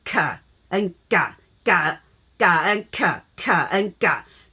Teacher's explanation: G is ga, K is ka. Actually, G and K, both of the two letters, you have to touch your upper jaw, your soft palate.